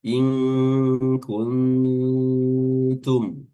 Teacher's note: In kun ya di sini juga nun sukun yang kedua bertemu dengan huruf ta, maka makhrajnya pada nun sukun ini sudah berada pada makhraj huruf ta, yaitu ujung lidah bertemu dengan pangkal gigi seri atas. In kuntum, dan mim mati di sini mim sukun juga dibaca idhar seperti sebelumnya. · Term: ikhfa